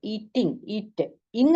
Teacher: this is pronounced with the stress on the first half of the word